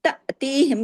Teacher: یہ جھٹکے سے پڑھا جائے گا کیونکہ یہ حمزہ الف ہے